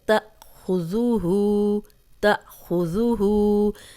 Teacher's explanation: حمزہ پہ جزم ہے، جب بھی حمزہ پہ جزم آئے گی تو جھٹکے سے پڑھا جائے گا، خو کو موٹا پڑھیں گے۔